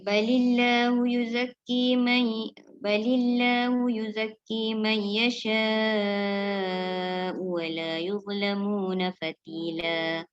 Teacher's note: Yasha tu dia panjang 6 harakat. Mad wajib muttasil hamzah 6 harakat.